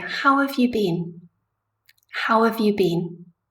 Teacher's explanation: I say have in a very soft way. I use the weak form. I don't say how have you been.